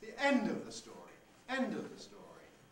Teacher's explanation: we've got a low tail low level tail high fall low level tale which is just what we expect end of